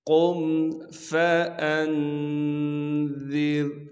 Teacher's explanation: قاف کو موٹا کر کے پڑھنا ہے کیونکہ قاف موٹے حروف میں سے ہے۔ قاف کو پھر آگے ہم میم ساکن سے ملائیں گے بغیر غنے کے۔